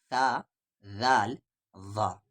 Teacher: جیسے یہاں پر 3 حروف ہے، تا، ذال ظا، اس کا مخرج کیا ہے؟ زبان کا کنارہ اور سامنے والے دو دانت کا کنارہ سے ان تینوں حروف کا مخرج نکلتا ہے